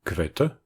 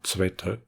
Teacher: les groupes kv et gv ont été palatalisés